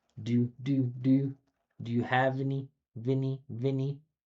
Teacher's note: Linking V to A.